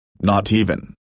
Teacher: Not even will become now no longer even with that flap T among the vowels sounding like D